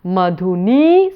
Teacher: So, the last nī is long